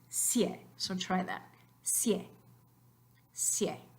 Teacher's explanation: It's not just like an I and it's not just like an E, but they don't make separate syllables. So it's just sie. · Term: diptongo